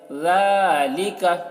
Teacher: کاف کو نہیں کھینچنا ہے، زبر ہے